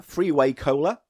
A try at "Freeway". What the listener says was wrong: And he wasn't just mispronouncing freeway, everyone. It's not three-way as in an orgy cola. It's freeway as in a road.